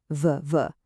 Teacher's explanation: make that sound vv, you'll feel your vocal cords buzzing. That's what we call a voiced sound. But the very next word to starts with a t sound.